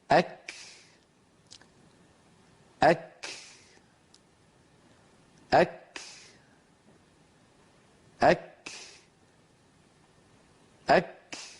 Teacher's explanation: لاحظوا أن الجزء الأول من نطق الكاف عبارة عن أن اللسان يرتفع فيصطدم أقصاه في مخرج الكاف عند الحلك اللحمي والعظمي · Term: كاف ساكنة مهموسة